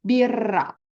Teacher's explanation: because we have double R, we have to keep the R sound longer. So we say birra.